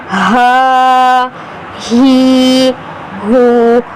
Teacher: ہا کو ہم سختی کے ساتھ ادا کریں گے حلق کے نیچے والے حصے سے